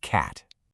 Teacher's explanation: To get that pure ah sound, you really have to drop your jaw more than you think. And your tongue has to be flat and forward in your mouth. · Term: short a sound